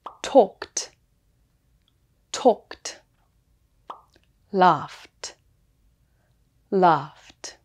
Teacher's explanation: talk and laugh end with the K and F sounds, so the ED is pronounced T.